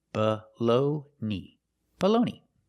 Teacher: The last vowel is a long e, like green beans. E, together, baloney.